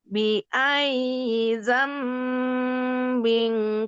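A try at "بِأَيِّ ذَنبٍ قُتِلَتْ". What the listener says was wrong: kurang ditekan. Biayyi kurang ditekan. Biayyi dzambin qutilat.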